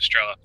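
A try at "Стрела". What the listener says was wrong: Strela, not Strel. Not straw. Fucking yeah, it sounded like you said straw.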